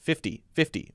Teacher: most people will say it with a light D sound. 50, or a D sound there.